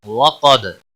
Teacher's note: دال حروف قلقلہ میں سے ہے، دال یہاں پر قلقلہ ہوگا دال کے اوپر